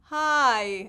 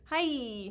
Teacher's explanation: diphthongs in English are called Falling dip talks that means that the first sound I is way longer than the second sound